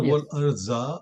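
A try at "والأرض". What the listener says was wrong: Wal arda. So that is a different pronunciation of dad with a za and dad that we have issue with, especially for us from Indo-Pak.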